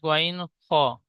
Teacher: হালাক বা কণ্ঠনালীর শেষ ভাগ হতে উচ্চারিত হয়